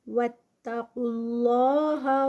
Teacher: لفظ جلالہ ہیوی، اس سے پہلے پیش آ رہی ہے